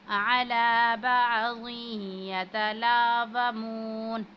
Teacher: जब तनवीन के बाद या आ रहा हो तो हम जो है यहाँ पे हरूफ यरमलून में से है तो इदगाम की सूरत में गुन्ना करेंगे